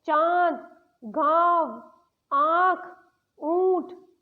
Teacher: इसका प्रयोग चंद्र बिंदु लगाकर किया जाता है। इसके बोलने में मुंह से और नाक से हवा आती है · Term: अनुनासिक